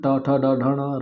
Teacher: ट ठ ड ढ ण र और श ये मुर्धा के द्वारा उच्चारित होते हैं